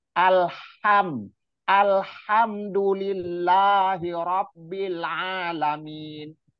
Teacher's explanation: dipersempit rongga tenggorokannya dipersempit terus hawanya anginnya dipaksa ditekan untuk keluar · himnya juga sama itu ha yang tipis jadi suaranya yang dihasilkan H yang dari tengah tenggorokan itu suara yang dihasilkan itu bersih dan tipis